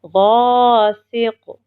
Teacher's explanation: قاف حرف قلقلہ میں سے ہے اس لیے ہم نے اس پہ قلقلہ کیا، غین کو موٹے حروف میں سے اس لیے اس کو ہم نے موٹا پڑھا۔